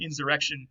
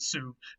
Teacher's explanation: that B is becoming an R before the R. It's a process of assimilation